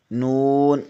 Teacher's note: زبان کے کنارے کی پشت اوپر والے دانتوں کے مسوڑوں سے لگے تو نون ادا ہوتا ہے